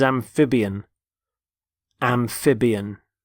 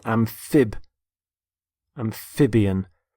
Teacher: Notice the stress on the middle syllable.